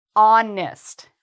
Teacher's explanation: They really want to say honestly speaking, but no H. Just start with the O.